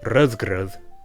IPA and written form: rœðgrœð (rødgrød)